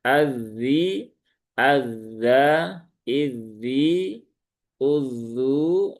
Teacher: Maka ketika dia bertasydid ya tunaikan rakhawahnya ya